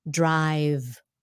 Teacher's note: so many drop that last ending sound